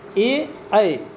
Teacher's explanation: ए, ऐ जो स्वर होते हैं वो कंठ तालव्य है